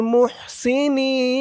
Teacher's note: এখানে মধ্যে আরজি তিন আলিফ টান হবে